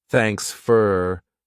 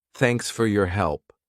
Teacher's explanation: Native speakers, we reduce sound. So for becomes fur